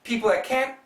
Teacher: this L makes the TH really tough to hear.